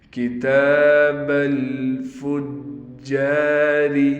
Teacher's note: جیم پر تشدید ہونے کی وجہ سے ٹھہراؤ کریں گے اور جیم کے بعد الف ہونے کی وجہ سے جیم کو ایک الف کی مقدار کھینچ کر پڑھیں گے